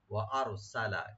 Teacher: ওয়া আরসালা, ওয়া আরসালা, ওয়া ওপেন রাখবেন, আর রা এখানে মাঝখানে ডিপ হবে, সিন ওপেন থাকবে, লাম ওপেন থাকবে, লামে লাস্টে কোনো টান হবে না।